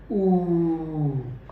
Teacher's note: जो मेरे लिप हैं वो स्ट्रांगली बाहर की ओर निकलेंगे और उनके बीच में बहुत थोड़ा सा स्पेस होगा · मेरी जो टंग है वो पीछे की ओर जाएगी, पीछे की ओर जाएगी और माउथ के बिल्कुल पीछे वाले हिस्से में ऊपर की ओर उठेगी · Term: बैक साउंड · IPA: /u:/